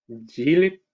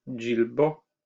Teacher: The vowel is there in the singular, but it is not present in the plural. So for example, jilip, ni, the plural is jilbo.